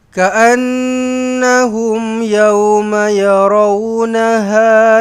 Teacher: Ka'annahum, nun sabdu dengungkan wajibul gunnah.